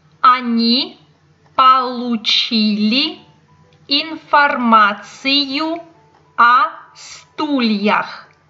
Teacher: the preposition о is always pronounced as a because it's not a stressed vowel